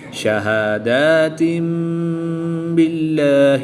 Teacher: 2 زیر کی تنوین کے بعد حرف با ہے تو یہاں پر انقلاب ہوگا، یعنی کہ تنوین 2 زیر کی تنوین کو میم سے بدل کر غنہ زمانے کر کے پڑھیں گے۔